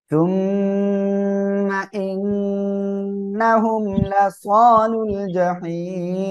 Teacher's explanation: ইন্না এখানে ওয়াজিব গুন্না, হুম গুন্না নাই। লাস এক আলিফ টান, লুল জাহিম এখানে তিন আলিফ টেনে পড়বো, আর এখানে অক্ফের কারণে সাকিন হচ্ছে এজন্য।